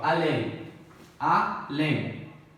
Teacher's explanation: Oxítona, né? Porque a última sílaba é tônica. Terminada em EM.